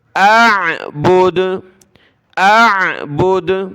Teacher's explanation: تو دال پر ہم نے قلقلہ کر لینا ہے۔ اعبدو، جب رکیں گے وقف کریں گے تو اعبد، اعبد۔